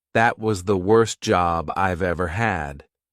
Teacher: sometimes when letters T and D appear between two consonants, they tend to disappear.